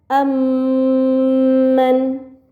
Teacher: mim sukun bertemu dengan huruf mim maka mim sukun dibaca secara melebur dengan gunah yang dipanjangkan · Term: idgham mimi